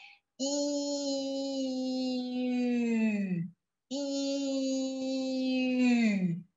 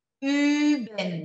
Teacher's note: E automaticamente, o som do I, ele vai se transformar num som de U, enquanto você puxa os seus lábios para frente